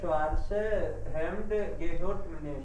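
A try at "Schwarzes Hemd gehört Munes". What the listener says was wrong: अब देखो तुम स्वार्थ से बोल रहे हो, लिख सही रखा है स्वार्थसस, ईएस लगा रखा है ना, क्योंकि ये दास है, लिखा सही है तो बोलना भी सही है। स्वार्थसस हेम्ड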